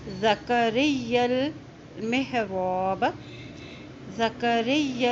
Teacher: یا کی زبر کو لام کے ساتھ ملائیں گے، لام کے اوپر جزم ہے